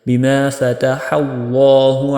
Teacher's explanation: میم کے بعد با آ گیا، یہاں پہ آپ نے اخفاء شفوی یعنی کہ تھوڑی سی دیر لگانی ہے۔